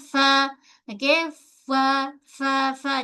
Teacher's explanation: Perut bibir menyentuh ujung gigi kacip bahagian atas. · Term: huruf fa